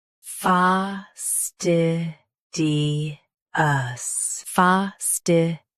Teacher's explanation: Both US and UK have the same pronunciation of this word. Stress -st. Keep -di clear and soften -ous.